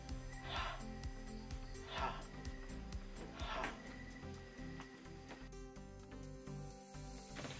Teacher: na bibigasin sa paraang pasutsut na walang tinig